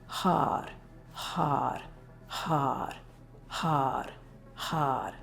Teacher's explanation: The mantra is Har, H-A-R. And right as you pronounce the sound R, it's a little bit of a roll of the tongue, Har. So your tongue is touching the roof of the mouth.